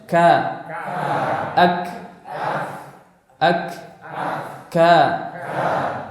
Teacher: pangkal lidah itu menyentuh antara kedua langit-langit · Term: huruf kaf